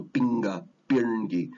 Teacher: the p and the k they tend to become more like a b and a g but it's next to a nasal sound